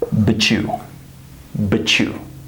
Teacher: when a word ends with a T, and the next word is you, your, yours, you'll, etc. This becomes a CH. So it becomes like this.